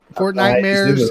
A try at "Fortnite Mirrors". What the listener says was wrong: Sounded like you just said nightmare.